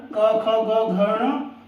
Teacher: इनका उच्चारण होता है कंठ से